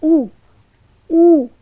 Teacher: की हमारी क्या स्थितियां बनती है तो पहली स्थिति है वृत्ताकार जिन स्वरों के उच्चारण में ओट वृत्ताकार हो जाए उन्हें वृत्ताकार स्थिति में रखते हैं